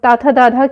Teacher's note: तथ दध की बात करें तो ये कहां से उच्चारित होते हैं दंत से